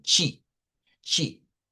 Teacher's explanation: la t en el portugués de Brasil se pronuncia como que fuese una CH. Esto que ven acá, este es el fonema de la ch.